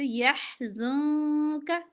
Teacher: يحزنك نون ساکن کے بعد قاف اخفا کریں گے